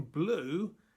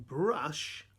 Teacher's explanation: in blue it sounds like you ooh sound but in brush ah it sounds like a ah sound